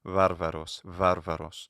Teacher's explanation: So you have bilabial fa as well as va. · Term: bilabial fricative